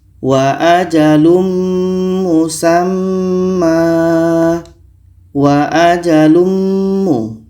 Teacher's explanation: Mim adalah huruf idgham bi gunnah. Maka tanwin ini kita masukkan ke mim dan kita baca dengung. Kita baca wa ajalum musamma.